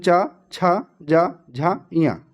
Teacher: इनका उच्चारण स्थान तालू से किया जाता है